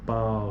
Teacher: esse a fica bem forte é o pico da sílaba é é a vogal e depois disso vem o u que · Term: ditongo